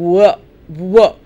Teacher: I'm rounding my lips it's almost as if I'm saying a vowel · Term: semi vowels